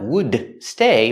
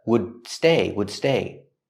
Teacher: the street we see the D at the end of wood it's a stop D stop the air don't release the D